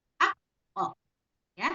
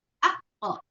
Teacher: Kalau qaf itu karena ini adalah huruf tebal, maka harus dipantulkan dengan vokal o ya. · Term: qalqalah pada huruf qaf